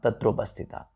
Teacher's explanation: तो अ और उ को मिलकर क्या हो जाता है, ओ हो जाता है।